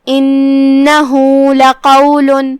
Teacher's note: کلمت لقول میں یہاں حرف القاف ہے. قاف کی ادائیگی زبان کی جڑ اور تالو کے نرم حصے سے ہے. قاف حروف تفخیم میں سے ہے تو ہم اسے بھاری آواز میں پڑھیں گے.